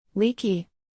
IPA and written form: ˈliː.ki (Leaky)